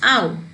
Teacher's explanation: Look at this ow. It is moving from central open position to back half close position.